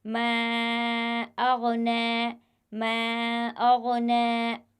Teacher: جو پہلا کلمہ ہے وہ ختم ہو رہا ہے حرف مدہ پر، اور دوسرا کلمہ جو شروع ہو رہا ہے وہ حمزہ سے شروع ہو رہا ہے، تو یہاں پر بھی مد منفصل ہوگا۔ اس حرف کو بھی ہم 3 الف کے برابر کھینچ کر پڑھیں گے